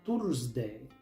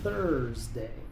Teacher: Muchos pronuncian esta palabra tsday, pero aquí la th se pronuncia con la lengua entre los dientes